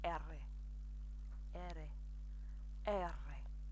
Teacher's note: what you're doing is you're rolling your tongue as you say arrey arrey arrey it's takes some practice some